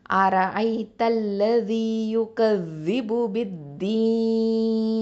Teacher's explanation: நடுவில் இருக்கக்கூடிய அலிஃபையும் லாமையும் உச்சரிக்க மாட்டோம் · மத்தல் ஆரிதல் சுக்குன் சட்டம். அப்போது 2, 4, 6 அளவுக்கு ஹரக்கத்தை நீட்டி நம்ம ஓதலாம்